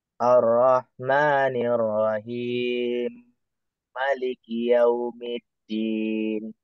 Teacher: Jadi, mimnya ini langsung bergabung dengan mim Maliki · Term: idgham